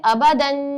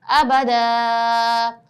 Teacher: دو زبر کو وقف میں ایک زبر سے بدل کر کھینچ کر پڑھتے ہیں۔ میں ریپیٹ کرتی ہوں، دو زبر تھے، دو زبر کو وقف میں ایک زبر سے بدل کر کھینچ کر پڑھتے ہیں، یعنی کہ ابدن کی جگہ ہم نے اس کو ایک زبر سے بدلا اور ابدا تھوڑا سا کھینچ کے پڑھا۔